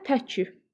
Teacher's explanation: təki sözündə vurğu əvvələ düşür